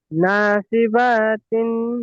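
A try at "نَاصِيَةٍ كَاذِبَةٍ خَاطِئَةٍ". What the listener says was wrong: নাসিবা না, ওটা ইয়া।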